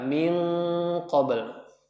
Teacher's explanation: Karena huruf qaf tebal maka dia tebal ikhfa-nya.